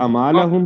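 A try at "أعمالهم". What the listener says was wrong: पढ़ेंगे तो ऐन नहीं पढ़ा जा रहा बीच में, आमालहुम।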